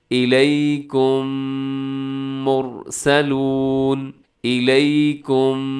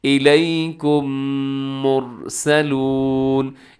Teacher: اب الیکم کے آخر میں میم ساکن ہے، اور میم ساکن کے بعد پھر میم آ گیا تو ہم نے اس کا ادغام کر دیا، دونوں کو ملا دیا۔ ایک میم کی طرح پڑھے جائیں گے۔ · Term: ادغام شفوی